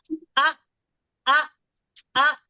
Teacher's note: जब साकिन होगा हमजा में सुकून डालेंगे आ तो वोकल कॉर्ड बंद हो जाएगा